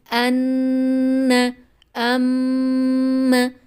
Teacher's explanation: یعنی آواز کو ہمیں ناک کی ہڈی میں روکنا ہوتا ہے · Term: غنہ